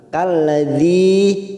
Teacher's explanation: Kalladzi kasrah bertemu ya sukun 2 harokat.